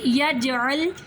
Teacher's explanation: جیم پر کلکلا کریں گے